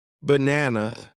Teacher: in the word banana, the stress is on the second part